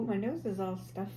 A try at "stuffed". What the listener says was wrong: Her nose is stuff. She did not pronounce the fucking T. You said stuff. It's all stuff. It's just stuff. Her nose is stuff.